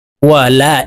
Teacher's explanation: এই লামে তিন আলিফ টান হবে